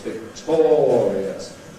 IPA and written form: vɪkˈtɔːriəs (victorious)